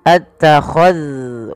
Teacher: hati-hati di dalam melafalkan zal yang sukun, jangan sampai ia dipantulkan ya teman-teman. Jangan mantul, jangan qul attakhadhtum.